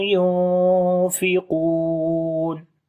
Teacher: قاف کو موٹا پڑھیں گے لمبا بھی کریں گے. واو مدہ جب رکیں گے مد عارض آ جائے گی.